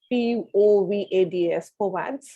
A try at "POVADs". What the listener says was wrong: that we have to pronounce it as a one word. POVADs.